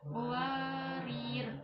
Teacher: Ro yang terakhir dibaca taklim karena harokat sebelumnya kasroh. Warir. Wa di situ mat tabi'i karena harokat fathah setelahnya alif yang disukun.